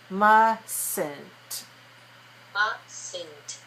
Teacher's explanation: So we make the last T sound, but we don't make the T in the middle. M-U-S-T, that T is silent. · And the T is silent when we make the negative.